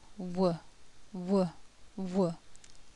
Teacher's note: when producing this sound W the lips begin very rounded and become less rounded the mouth starts closed and moves to a half closed position and the tongue moves from the back of the mouth mouth